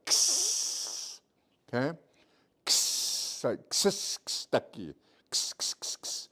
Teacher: But you hear the S's more than you do the K, right?